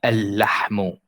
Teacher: If there is another lam after, like the word al-lahmu, al-lahmu, we get rid of the first lam and we only say this lam with shadda. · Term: solar letters